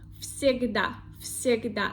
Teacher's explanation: But second one is the sound s, voiceless. So first voiced sound v have to become also voiceless, and it become the sound f from the list of our voiceless sounds.